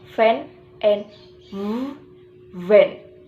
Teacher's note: udara yang didorong melalui gigi atas dan bibir bawah atau labiodental